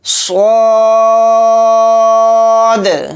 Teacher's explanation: صاد کو موٹا یعنی پر پڑھیں گے اور صاد کو کھینچ کر بھی پڑھیں گے۔